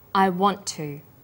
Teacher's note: The final t sound in want is held slightly longer on the tongue. Then to is pronounced. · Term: consonant plus same consonant linking